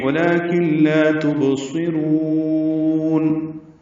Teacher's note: کن میں کاف باریک نون ساکن کے بعد لام آنے کی وجہ سے ادغام کامل کرنا ہوگا، ولیکن لا پڑھیں گے، لا الف مدہ ہے۔ تبصرون میں با ساکن پہ قلقلہ ہے